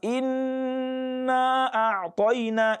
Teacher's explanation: the elongation of inna before I pronounce a'tayna can be either 2, it can be 4, and it can be 6. So it depends on the pace of your recitation.